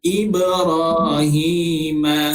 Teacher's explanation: ba mati, okey, secara automatiknya ia adalah huruf qalqalah. Huruf qalqalah kita baca secara berentak lah